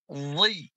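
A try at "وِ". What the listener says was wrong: Jangan monyong mulutnya ya, bukan wi, bukan wi, tapi wi, nggak monyong.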